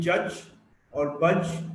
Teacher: We go to j, the voiced alveolar affricate